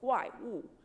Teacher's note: You're not going to say so much of a W. It's a very soft one.